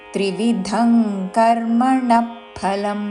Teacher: అనుస్వారము క వర్గములోని అనునాసిక అంగ్ ఉచ్చారణ